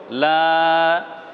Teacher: লামের উপর খাড়া জবর আছে, অর্থাৎ দীর্ঘ আকার আছে, একটু টান লম্বা হবে